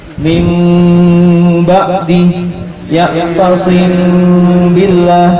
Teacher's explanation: bacanya ditutup bibirnya tapi tidak rapat. Tapi tidak rapat, dibuka sedikit aja. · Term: ikhfa syafawi